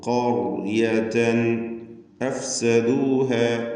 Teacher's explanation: തൻവീനും ശേഷം ഹംസയുമാണ്. ഇൽഹാർ ഹൽക്കി ചെയ്ത് മണിക്കാതെ വെളിവാക്കുക. · റാഇനും തഫ്ഖീമാണ്, റാഇന് സുക്കൂൻ, തൊട്ട് മുമ്പിൽ ഫത്ഹ് ഉള്ളതുകൊണ്ട്